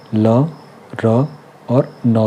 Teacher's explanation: ल, र और न का उच्चारण दंतमूल्य से होता है